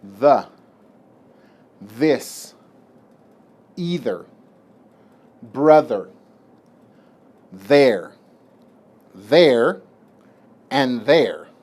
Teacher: sound for the th this is a voiced sound this sound you use also by putting your tongue between your teeth but you use vibration of your vocal cords